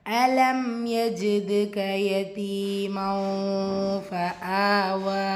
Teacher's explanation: மண் தன்வீனுக்கு அப்புறமா ஃபா இஹ்ஃபா உடைய சட்டம் தன்வீனில் இருக்கிற நூனை பாதியாக மறைச்சு குன்னா செஞ்சு ஓதணும் · தால் சுக்கூன் வச்சு வந்திருக்கு. கல்கலத்து சுகுரா சிறிதாக அசைச்சு ஓதணும். ஏன் சுகுரா இடையில் வந்திருக்கிறனால.